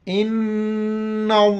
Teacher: इन्न की वजह से लफ्ज़ अल्लाह को मोटा पढ़ेंगे